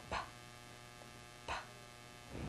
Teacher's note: a burst of air coming out of your mouth as your lips popped open lips start closed and pop open and for that very reason